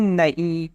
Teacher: نمک میں نون پوری طرح سے ظاہر ہے، مسکان میں نون پوری طرح سے ظاہر ہے، یہ سب نون ظاہر کی مثال ہے، لیکن نہیں، یہ نون غنہ ہے، یہاں بعد والے نون کی آواز ناک سے نکلتی ہے